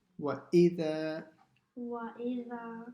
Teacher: Okay, the first thing is وَإِ. The hamza has to be pronounced from the bottom of the throat.